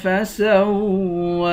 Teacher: خا اور قاف دونوں کو موٹا پڑھیں گے الذی خلق فسوى سین کو واو کے ساتھ ملا کر واو پر کھڑا زبر ہے واو کو ایک الف کی مقدار کھینچ کر پڑھیں گے